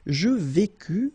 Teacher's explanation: Je vécus, final S not pronounced